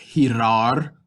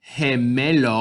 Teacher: with our gi and ge we get more of an h sound